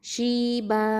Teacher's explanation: இப்போ வக்ஃபு பண்ணுறதுனால மத்துல் ஐவத் சட்டம், 2 ஹரக்கத்தை நீட்டி நிப்பாட்டுவோம்